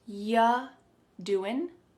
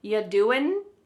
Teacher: When we say you doing anything fun, instead you're going to hear y doing. Y, the word you is reduced to y.